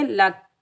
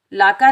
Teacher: काफ पर हम कलकला पैदा नहीं करेंगे, लाका नहीं पढ़ेंगे।